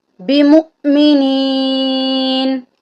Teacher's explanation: یہاں پر ہم نے میم کو حمزہ کے ساتھ ملانا ہے اور ہلکا سا جھٹکا دے کے پڑھنا ہے